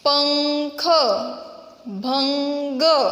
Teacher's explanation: वर्ण के ऊपर लगने वाले बिंदु को अनुस्वार कहते हैं। अब ये जो अनुस्वार है इनका उच्चारण स्थान हमारा नाक होता है, इनका उच्चारण हमारे नाक से होता है।